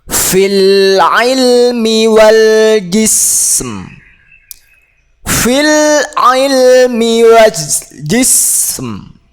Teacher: ketika ada sin yang disukun ini, ditunaikan dulu sifat sinnya dengan sempurna dulu, kemudian mimnya. Jadi mimnya tidak boleh kita hilangkan, atau nanti yang terjadi ialah menghilangkan huruf, tidak boleh.